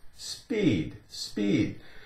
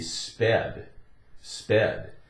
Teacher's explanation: The long E sound would turn into a short E.